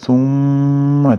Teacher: summada tashdidli mim kelayotekanligi uchun ushlab turamiz ya'ni g'unna